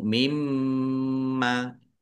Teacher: gandeng maka langsung mimma ya nun sukun bertemu dengan huruf mim idgham di ghunah masuk dengan mendengung lah ini mim tasdid juga mendengung maka mim tasdid ini dibaca mendengung mimma bibirnya mingkem